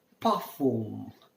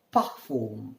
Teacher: R is pronounced as half the ha, half the ka.